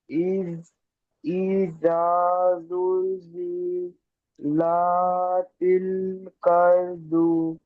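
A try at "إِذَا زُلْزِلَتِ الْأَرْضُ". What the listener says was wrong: কার না, এটা আরদু। কাফ চিনতে পারছেন না? আলিফকে কাফ করে দিচ্ছেন।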